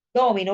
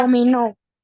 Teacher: Domino, si usted la pronuncia así, eh, no sería una palabra aguda, porque recuerde que las agudas son las que se acentúan en la última, ¿verdad? Su fuerza mayor se hace en la última sílaba.